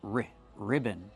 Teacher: It's two syllables. Put the stress on the first syllable. Ri ribbon. Use a short sound like this.